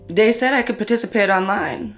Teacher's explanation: TH stopping, so that might be using something like a D sound for where you see a written TH, so dat for that.